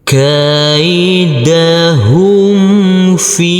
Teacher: Huruf fa kita baca panjang dengan panjang 2 harokat karena huruf fa yang berkasroh ini bertemu dengan huruf ya sukun.